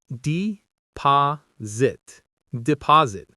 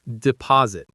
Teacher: The S has a Z sound. Stress on the second syllable.